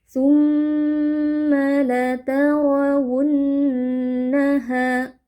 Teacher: Ra tebal karena berharokat fathah. Lalu wunna di sini juga ada nun tasydid, kita baca dengan dengung panjang.